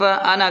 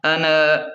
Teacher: یہاں نون کے الف کو کھینچنا نہیں ہے، اسے صرف انا کر کے پڑھیں گے